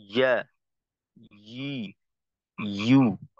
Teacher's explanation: আর ইয়ার ক্ষেত্রে তো আমরা সিফত যেহেতু জানা আছে, তো আমরা কিন্তু অনেক সময় ইয়ার মাখরাজে ভুল করে ফেলি। ইয়ার মাখরাজ হইলো জিহ্বার মধ্যখান, এই আওয়াজের তৈরিটা হবে বা আওয়াজের উৎপত্তি হইলো জিহ্বার মধ্যখান। আমরা কিন্তু অনেক সময় এই জায়গার ব্যবহারটা না করে হলকের ব্যবহারটা করে ফেলি। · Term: ইয়ার উচ্চারণ